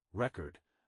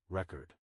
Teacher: For example, in the word record, the stress is on the first syllable when it is a noun, record, and on the second syllable when it is a verb, record